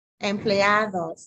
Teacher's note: So that D sound like a TH.